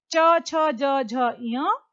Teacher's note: तालव्य कठोर तालु से, जो ऊपर हमारे मुख के ऊपर तालु होता है